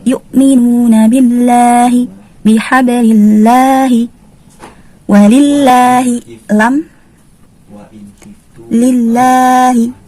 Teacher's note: Lafzul jalalah juga dibaca tarqiq atau tipis.